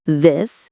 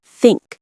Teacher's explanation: English has two th sounds. voiced as in this and voiceless as in think.